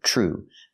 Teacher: We hear TR in true make the sound ch like chicken plus the R.